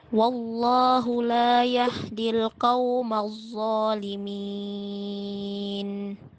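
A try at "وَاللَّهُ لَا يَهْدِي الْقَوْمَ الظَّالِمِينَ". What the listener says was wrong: Hati-hati huruf dha enggak boleh keluar udara. Ujung lidah dengan ujung gigi paling atas. Allah, zalimin.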